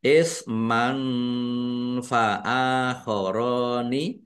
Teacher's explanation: Fathah tanwin bertemu dengan huruf fa. Bacaan ikhfa dibaca samar-samar.